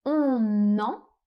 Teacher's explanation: on fait une première liaison entre le N et le E.